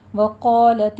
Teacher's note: قا میں قاف حرف مستعلیہ میں سے ہے، پر پڑھا جائے گا